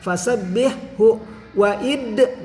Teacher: Fasabbih hu waid, nah dalnya harus memantul, ini hukum qalqalah sugro